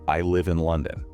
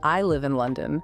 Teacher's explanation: The pitch goes up on the word London. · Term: Uptalk